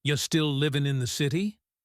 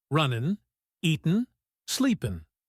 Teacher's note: In fast speech, it sounds like you still livin' in the city. The G in living is dropped. We almost never pronounce the G at the end of ing words in casual conversation. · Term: drop the G